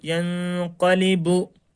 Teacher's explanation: اس وقت نون کی آواز کو ناک میں چھپا کر پڑھنا ہے